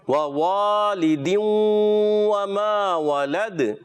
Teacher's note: दूसरा वाव जो है मद्दा वाला, इसको खींचेंगे. वाह वालिदू, पहले वाला वाव हरकत वाला है, नहीं खींचेंगे.